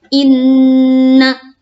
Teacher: Ini nun tasydid. Nun tasydid itu karena dia dengung, bagian dari gunnah. Kalau gunnah itu sudah pasti tekan, sudah pasti tahan.